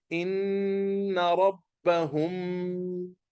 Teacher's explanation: The meme will be recited with gunna. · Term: ikhfa shafawi